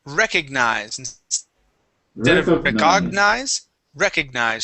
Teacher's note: Recognize stress at the beginning